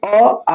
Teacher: अ आ तो कंठ से निकलता है तो अ का उच्चारण स्थान कंठ आ का उ स्थान कंठ